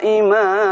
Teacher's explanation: Bacaan binaa'a dan maa'a, a-nya dibaca panjang 2 harakat